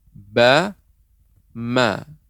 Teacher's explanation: Ba dan mim makhrajnya sama, yaitu bibir.